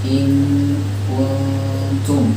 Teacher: kaf kan dari ujung tenggorokan ya. Ya pangkal lidah ya, pangkal lidah